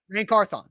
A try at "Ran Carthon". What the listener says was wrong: Now over exaggerate it and then bring it back a little bit. Not quick. I'm trying to slow it down for you because you're just speeding through it. You're not going 100 miles per hour, but you're going 99.